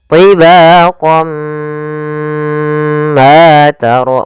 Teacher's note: Naqis itu berarti tidak terlalu sempurna masukannya. Masih ada sedikit sisa-sisa suara tanwinnya atau suara nunnya. Maka tibaqan, ya, kita langsung masuk ke mim. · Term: idgham bi gunnah